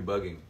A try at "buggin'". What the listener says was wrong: No, bugging. No, ing. It's just in at the end.